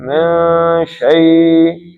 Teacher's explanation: نون کا اظہار بھی نہیں کرنا، زبان تالو سے بھی نہیں لگانی